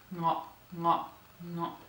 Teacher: the nasal guttural sound, the one that's produced back in the throat